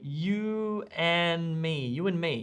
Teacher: you'll hear a lot of english speakers doing this often dropping the d in and